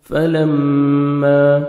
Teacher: میم مشدد غنہ کریں گے، نوز میں ساؤنڈ لے کے جائیں گے